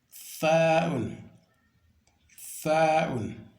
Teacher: vous mettez la langue entre les deux niveaux dentaires, donc niveau supérieur et niveau inférieur. Donc, sa'un, sa'un.